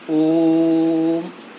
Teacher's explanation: इनके उच्चारण में तीन मात्राओं का समय लगता है जिसको हम प्लुत स्वर कहते हैं